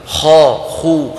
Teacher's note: كيفما قلبتها الخاء مفخمة كما سيأتي معنا